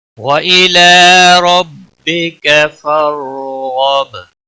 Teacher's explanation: با وقف کی صورت میں ساکن ہی رہے گا، اس پر قلقلہ بھی ہوگا کیونکہ یہ حروف قلقلہ میں سے۔ وَإِلَى رَبِّكَ فَارْغَب، ایک بار